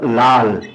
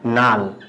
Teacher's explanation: অর্থাৎ দুটো একই রকম ব্যঞ্জন ছিল ল ল, সেখানে একটা পরিবর্তন হয়ে গেছে। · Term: বিষমীভবন